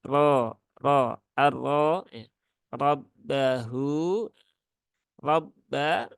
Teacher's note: Ada huruf ra berbaris fathah. Maka ra-nya dibaca dengan tebal, ro ya, bukan ro tapi ro arro ya.